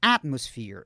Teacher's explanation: Observe que a sílaba tônica está na primeira sílaba, ó. Atmosphere, ó.